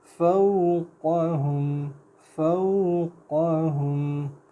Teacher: قاف کو تھوڑا پر کریں گے